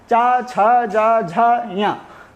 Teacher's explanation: ये 5 वर्ण चा वर्ग में आते हैं। तो इनका उच्चारण स्थान भी तालु होता है। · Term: तालव्य